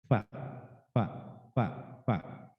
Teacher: jadi perut bibir bawah bertemu dengan gigi seri atas